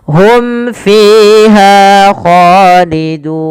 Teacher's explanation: Jelaskan suara mimnya pada lafal hum fiha karena ia izhar syafawi